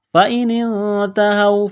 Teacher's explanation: نون ساکن کے بعد یہاں پر تا ہے تو اخفا کریں گے، آواز ناک میں چھپائیں گے